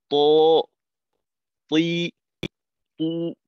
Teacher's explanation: জিহ্বার আগা সামনের উপরের 2 দাঁতের গোড়ার সঙ্গে আগে লাগাইতে হবে। এই লাগানোটা ঠিক রেখে তারপর জিহ্বাটাকে যতটা উপরে উঠানো যায়। · আর তয়ের ক্ষেত্রে জিহ্বার আগা দাঁতের আগাকে অবশ্যই স্পর্শ করবে, যেহেতু এটা হলো মাখরাজ।